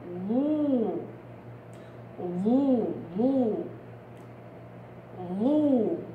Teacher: بأضم طبعا عشانها مضمومة، وبأضغط الصوت لأنها مطبقة